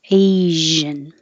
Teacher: make shh because everybody can do that and then have sound have vibration in your throat